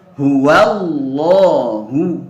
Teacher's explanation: sebelum lo itu ada huruf yaitu hamzah wasal yang dia dibaca fathah a, sehingga lam pada lafdzul jalalah ini dibaca tebal.